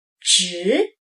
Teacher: The second tone, rising